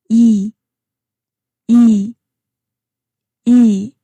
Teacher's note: The sound is high and front focused.